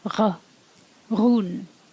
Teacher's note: When you add Shevu to a D, in a broad context, it sounds like r. It's almost a gargle at the back of your mouth, almost in your throat.